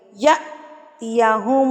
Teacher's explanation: یا حمزہ کے اوپر جزم آ گئی ہے تو یہاں پر ہم جھٹکا دیں گے